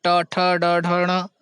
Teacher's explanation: ट ठ ड ढ ण और यह मूर्धन्य यह मूर्धा से उच्चारित किए जाते हैं